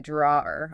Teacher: the vowel changes to more of an or sound, and the W is silent